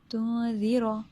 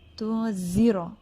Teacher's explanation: زال کا جو مخرج ہے، جو نکلنے کی جگہ ہے، وہ یہ ہے کہ زبان کی نوک جو ہے، ٹپ جو ہے، سامنے کے 2 دانتوں کے اندرونی کناروں سے لگے، یعنی ایجز سے لگے، ٹھیک ہے. اگر یہ نیچے لگ گئی تو پھر یہ ہوگا تنذر.